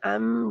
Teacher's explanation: जो आवाज है किधर को डायवर्ट हो गई नाक की तरफ नाक की तरफ डायवर्ट हो गई है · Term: मीम